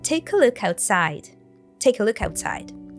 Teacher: the K sound from take is linked with the schwa sound from a, take a look. And the K sound from look is linked to the next word as well, look outside. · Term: connected speech